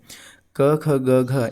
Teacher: इन सभी का उच्चारण स्थान क्या है? हमने कई बार पढ़ लिया है। कंठ है।